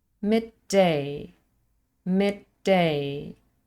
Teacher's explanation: This is just one word, midday, but we have mid and day, two morphemes making up the word. And the first one ends in the plosive d, and the next one starts with the same plosive d. Midday, a slightly longer d sound. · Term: gemination, gemination across morphemes